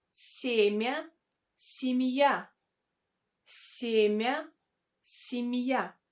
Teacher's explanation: Can you hear this really light sound I after M?